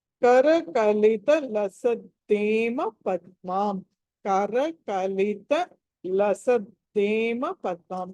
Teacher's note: లసద్దేలో ద మామూలు అల్ప ప్రాణము